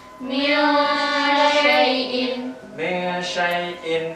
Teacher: Jadi ketika suara nun ini samar-samar ketika min syai'in. Jadi ketika mulut kita mengucapkan di nun sukunnya, mulut kita itu seolah-olah sudah apa masuk ke huruf ikhfa-nya ya, shin.